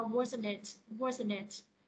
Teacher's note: Thì cái chữ it này nó sẽ đi xuống cho câu là wasn't it